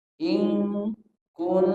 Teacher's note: in Kun sama-sama ikhfa didengungkan dan samar